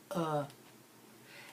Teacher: the schwa sound is that uh and sometimes we say it's so fast that you barely even hear it it's almost like it's not even there it's almost like it's